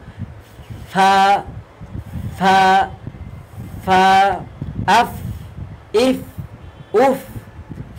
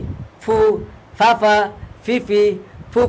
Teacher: নিচের ঠোঁটের প্যাট সামনের উপরে দুই দাঁতের আগার সঙ্গে লাগাইয়া উচ্চারিত হয়